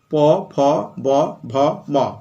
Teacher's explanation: যে সকল ব্যঞ্জন ধ্বনি উচ্চারণ সময় ঠোট পরস্পর পরস্পরকে স্পর্শ করে ঠোট নিচের ঠোট উপরের ঠোটকে অথবা উল্টোটাও হতে পারে ঠোট পরস্পর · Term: অষ্ঠ ব্যঞ্জন ধ্বনি